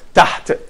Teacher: But if you just say taht, you're making sukoon. You don't pronounce that at all. We don't have any vowel.